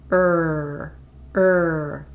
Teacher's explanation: your tongue tip is not touching anything okay your tongue is bunched up it's bunching up in your mouth and the sides of your tongue are pressing against your upper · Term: retroflex